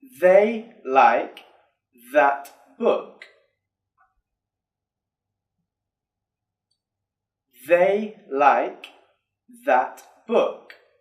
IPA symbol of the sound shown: ð